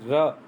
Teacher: जिस व्यंजन के उच्चारण में जिह्वा की नोक वायु से रगड़ खाकर कांपती रहती है उसे प्रकंपित व्यंजन कहते हैं